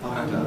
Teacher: we make the [nd] sequence with a single articulatory gesture, adjusting the soft palate in the middle · We've got nasal approach in the words enter and under, because again you say under with just a single articulatory gesture of the tongue tip. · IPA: [ˈʌndə]